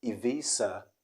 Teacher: the zed changes to s